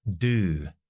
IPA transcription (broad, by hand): du: